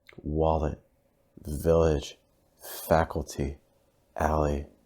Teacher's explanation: because it lets more air come through and what happens is the L almost becomes a vowel sound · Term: dark L